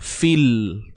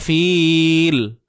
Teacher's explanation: huruf ya mat ni dah tak berfungsi tuan-puan, digugurkan bunyinya. Fil. Terus, jangan panjang fil.